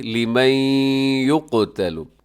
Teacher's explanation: نون ساکن ہے، اس کے بعد یا یرملون کا، اب یہاں ادغام کیجیے گا غنے کے ساتھ